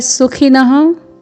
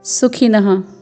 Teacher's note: पूर्ण दंत्य स में ह्रस्व स्वर है, फिर ख में ह्रस्व स्वर, फिर न में विसर्ग है